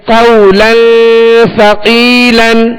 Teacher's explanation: قولا یہاں لام کے اوپر دو زبر کی تنوین ہے، آگے سا حروف اخفا میں سے، لہذا یہاں پر غنہ کریں گے